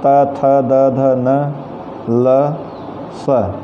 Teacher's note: दंताह से तात्पर्य एक दांत नहीं, ढेर सारे दांत। इन वर्णों को बोलते समय जिह्वा दांतों का स्पर्श करती है।